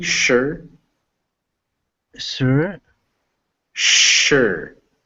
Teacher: you want to make sure it's a sh sound not a s sound